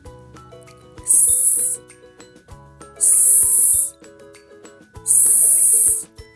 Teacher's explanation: Кінчик язика за нижніми зубами. Отже, звук «с» приголосний, твердий, глухий.